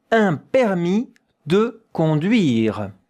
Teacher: De, you hear everything. De, conduire, you don't hear the E at the end.